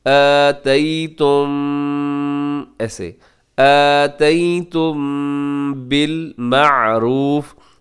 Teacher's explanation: آتیتم بالمعروف, آتیتم کے آخر میں میم ساکن کے بعد با ہے, تو یہاں اخفاء شفوی ہوگا. میم کی آواز کو تھوڑا سا ناک میں روکیں گے